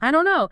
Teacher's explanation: the T drops the vowels reduce it's super common super fast. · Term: Elision